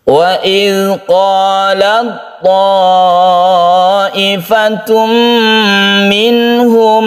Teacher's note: idhar halqi yang tidak kita tahan, maksudnya langsung harus jelas, tidak berdengung untuk nun bertemu dengan ha ini